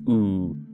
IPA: uː